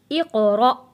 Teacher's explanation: قاف حروف قلقلہ ہے، آواز واپس پلٹ کر آئے گی